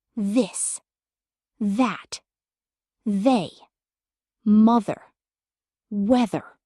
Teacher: Pattern two, voiced th. Now touch your throat. Say th. Can you feel the vibration?